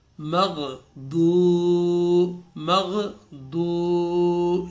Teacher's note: پیش والے حرف کے ساتھ جب واو ساکن آئے گی تو اس کو ہم نے، اس میں حرف مدہ ہے، اس کو ہم نے ایک الف کے برابر کھینچنا ہے